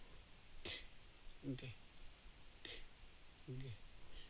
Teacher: Just to barely let my tongue let that air out. K and G are made with a puff of air at the back of your mouth.